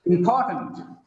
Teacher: Because of the stress on second syllable. The last vowel becomes weak. It becomes tent, not tent.